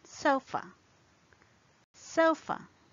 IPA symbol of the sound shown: ə